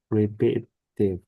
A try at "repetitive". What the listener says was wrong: Good. That's the word, repetitive.